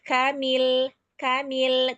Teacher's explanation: lam itu istifal hurufnya tipis. Dia hanya di lafaz Allah saja tebalnya ya.